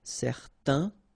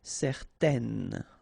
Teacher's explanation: you've got this A-I-N together, and then they will produce this un sound. Okay, so it's nasal in your nose, un. Okay, if you add this at the end, then it will change the thing, and then you will pronounce it n.